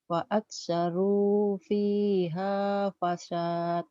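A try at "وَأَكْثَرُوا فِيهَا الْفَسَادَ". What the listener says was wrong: Pendek mantobi'inya karena ketemu alif lam, ketemu huruf mati. Fa'aksaru fi hal fasad. Pendek. Fa'aktsaru fihal fasad.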